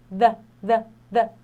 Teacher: Esse TH do the, ele é aquele TH vozeado que parece um fake D, tipo um D falso